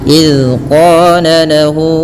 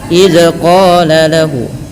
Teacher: Contoh, idz qala lahu, itu maka dia akan memantul. Pada dasarnya zal tidak boleh memantul.